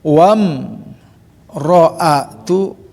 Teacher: wam tidak ada tahanan ya, izhar syafawi jelas di bibir. Wam ro, jangan mikir wam ro'a, awas jangan terjebak.